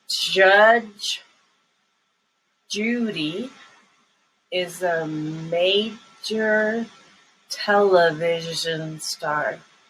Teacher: remember that the j sound has like a little d first the d is a stop sound